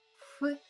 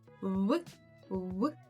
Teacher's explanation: ф ти просто як видуваєш ф голос при цьому не не држить А от в в вже тут є таке дрижання